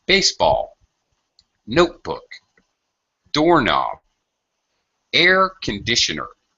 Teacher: primary stress and the low pitch is called secondary stress so with compound nouns we commonly have a very quick like a stair step change in tone or pitch · first word has primary stress and is pronounced quite high. The second word is the stressed syllable in that word is low, or has what we call secondary stress. It is stressed in that it is spoken loudly.